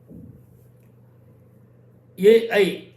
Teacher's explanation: ఏఐ అనేటువంటిది కంఠము దవడ కలిస్తే వస్తాయి